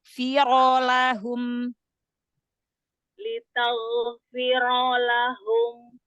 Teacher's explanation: ro-nya angkat pangkal lidahnya